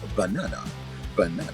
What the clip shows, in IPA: bəˈnɑːnə